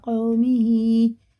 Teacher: واو ساکن سے پہلے زبر ہے تو حرف لین ہے، جلدی پڑھیں گے اس کو بنا کھینچے